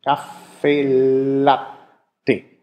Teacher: wenn man es ausspricht, dann sind alle Konsonanten lang. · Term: lang Konsonant